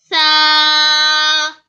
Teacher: Sa comes from tip of the tongue, touches the edge of upper front teeth. The tongue comes out a little.